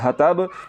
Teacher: زبان کی جڑ کو تالوں کی طرف بلند نہیں کیا، تو پھر آپ اس تا کو پڑھ رہے ہیں، جو کہ غلط ہے۔